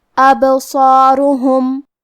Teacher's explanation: صاد حروف التفخیم میں سے ہے تو ہم یہ حرف کو بھاری آواز میں پڑھیں گے، اور کیونکہ اس کے بعد مد الف ہے تو ہم مد الف کو بھی بھاری آواز میں پڑھیں گے. · کلمت ابصارهم میں با پہ جزم ہے تو ہمیں با کو قلقلہ سے پڑھنا ہے، اور قلقلہ کا معنی ہے حرف ساکن کو ہلانا، تو ہم با کو ہلاتے ہوئے یہ کلمہ کو پڑھیں گے